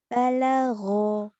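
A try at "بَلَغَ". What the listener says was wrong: Nggak ada yang panjang.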